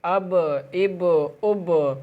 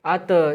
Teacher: اگر با کے اوپر جزم آ جائے گا تو یہاں پر آواز لوٹے گی، تشدید آنے پہ نہیں، جزم آنے پہ یہاں پر آواز لوٹے گی، اب اب اب۔ اب اس سے آگے آتا ہے تا، اور تا جو ہے حرف کلکلہ کا لفظ ہے نہیں تو یہاں پر آواز نہیں لوٹے گی۔